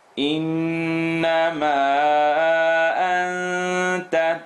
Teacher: We end here with noon shadda, full nasal sound.